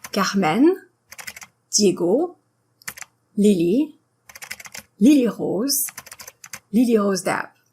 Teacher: you make the last syllable a little longer. Never stress the first, second, or third syllable of any words.